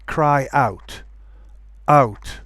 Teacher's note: For example, you can say cry out, or you can say cry out, out. Okay, I'm putting a glottal stop, and that will avoid any kind of linking sound.